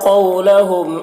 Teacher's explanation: واو لین ہے، نرم آواز کے ساتھ جلد پڑھیں گے